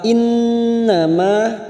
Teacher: nun yang bertasdid gunnah musaddadah kita tekan 3 harokat